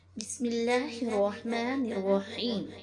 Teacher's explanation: لفظ اللہ کے لام سے پہلے زیر ہو تو لام باریک ہوگا، جیسے بسم اللہ الرحمن الرحیم۔